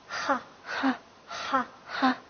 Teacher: 那么它的发音方法呢？发音方法是喉擦音 。好的，那一起来读一下，哈。好的，那么这个哈的话，跟我们这个汉语里面的这个哈，对吧？是完全一样的。好，那么给它另外加一个音节的话是，就是加同样一个字，哈哈，对吧？也就是笑的意思，哈哈哈，就让哈哈大笑，对吧？哈哈，好，还有一个是哈科瓦。哈科瓦是